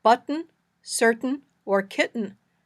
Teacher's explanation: the first syllable in each word is stressed. We hear a glottal stop in the middle.